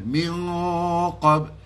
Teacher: Nun pada qaf itu mesti nun yang mati itu dibawa pada hampir kepada ataupun a hampirlah senang cerita kan disembunyi di sebalik makhraj huruf qaf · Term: ikhfa